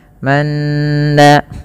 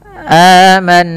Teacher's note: tahan bunyi suara nun ketika nunnya berharakat tasydid dan dibaca dengan bacaan gunnah